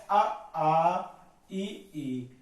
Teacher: नाक का कोई इसमें प्रयोग नहीं हो रहा नाक से बिल्कुल भी सांस नहीं निकल रही है · सांस केवल मुख से निकलती है उसे निर नासिक स्वर कहते हैं